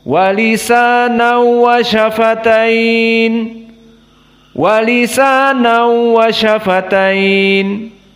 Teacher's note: Maka hanya idgham pada waw, tanwin masuk kepada waw tanpa kepada gunnah. Maka makhrajnya tidak kepada khaysum. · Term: idgham bila gunnah